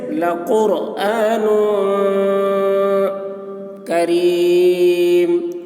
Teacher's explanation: نون میں اخفا ہوگا، یعنی اس کی آواز کو ناک میں لے جا کر چھپائیں گے